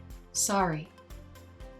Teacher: this word is pronounced by american english speakers with an ah